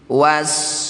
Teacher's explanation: Ya sukun baca dengan lembut panjangkan enam harakat. Jangan lupa huruf terakhir sukunkan wasifi ketika berhenti. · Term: madlin